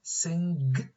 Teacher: the tongue back articulates against the soft palate